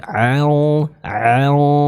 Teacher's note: ada hukum ikhfa di sana dan bertemu dengan huruf yang tebal maka dengungnya juga harus dibaca dengan tebal